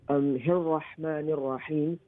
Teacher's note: The ra has a tashdid on it, which makes it double letter, double sound. The ra is also full mouth because it has a fatha on top of it. And the ra also will be a sun letter because you cannot pronounce the lam.